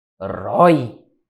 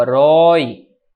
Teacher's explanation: é um ditongo aberto, o oi, ocupando a posição oxítona